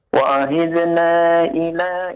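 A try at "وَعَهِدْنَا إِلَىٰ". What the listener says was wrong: Wa'ahidna, panjang 5 harokat. Ila juga 5 harokat. Ila ya panjang 5 harokat.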